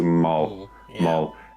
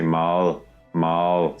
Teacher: you make like an l sound but instead of putting your tongue there you put it behind your bottom teeth · just say it like you're used to Mal M and now instead of the tongue up for the L in the end you put the tongue down instead of Mal you say Mal Mal so what we can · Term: soft one